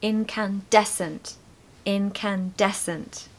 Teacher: make sure to stress des, okay? So the third syllable